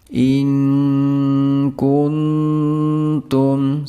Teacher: nun sukun bertemu kaf dan nun sukun bertemu dengan huruf ta. Di sini masing-masing dibaca samar atau mendekati dengung.